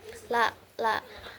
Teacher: huruf la ini keluar dari sisi lidah kanan atau kiri, la. Kemudian cara keluarnya ini sedang atau tengah-tengah, la, tengah-tengah. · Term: huruf lam